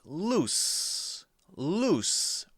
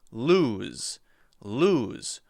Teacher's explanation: The only difference is that loose has an S sound, s, and lose has a Z sound, z.